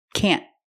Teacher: We use a stop T, can't. The tongue goes up and stops the air.